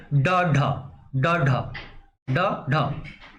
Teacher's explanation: जीभा ऊपर उठकर मूर्धा को स्पर्श करके जो है तुरंत नीचे गिरती है। उसको क्या कहते हैं, उच्छिप्त या ताड़न जात कहते हैं।